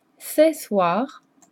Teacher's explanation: So it's just a more open E.